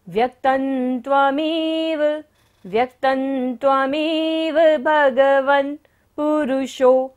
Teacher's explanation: त के ऊपर बिंदी है और बाद में क्या आ रहा है, त वर्ग, त थ द ध न। जब बिंदी के बाद होता है तो बिंदी का उच्चारण क्या होगा, न।